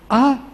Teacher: modification or quality mere or initial being creative of space ah sound is not obstructed by anything it's just the vibration of vocal cords and nothing else there is no articulation taking place the vocal chords vibrate and